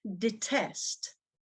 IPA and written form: dɪˈtest (detest)